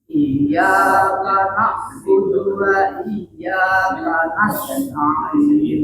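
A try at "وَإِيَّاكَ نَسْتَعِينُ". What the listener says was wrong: Nah, sin itu dibunyikan kayak tadi, nas. Jadi jangan kanasta'in, itu belum sempurna bunyi sofirnya. Jadi harus kanasta'in. Ya, jadi nas mengalir dia, nas.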